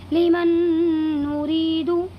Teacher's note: نون ساکن کے بعد دوسرا نون آیا ہوا ہے، اسی لیے اس میں ادغام ناقص ہوگا اور اس کو بھی غنہ کے ساتھ ناک میں لے جا کر کے ادا کریں گے